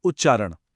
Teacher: उत के त ने जब चारण के च को देखा तो वो खुद भी च बन गया और बना उच्चारण।